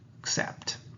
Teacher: the word starts in a relaxed manner and end with a stressed apt sound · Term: schwa